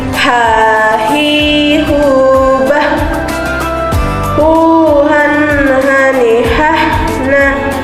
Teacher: Dikeluarkan dari tenggorokan terjauh. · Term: huruf H